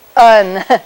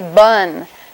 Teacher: And the reason we can distinguish pun from bun in English is because we know when to turn on our vocal folds and when to turn them off. Because the same two lips are doing the same thing. The only thing that's different is down in the vocal folds. So we can distinguish a voiceless stop consonant from a voiced stop consonant.